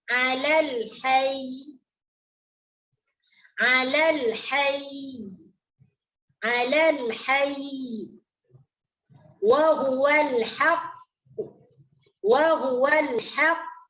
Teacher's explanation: hendaklah ditekan secara lembut tasydidnya, ya, ditekan secara lembut tasydidnya dengan cara memegang huruf itu lebih lama sedikit. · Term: waqaf setengah harokat